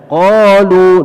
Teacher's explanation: Qalu 2 harakat saja ya, mad asli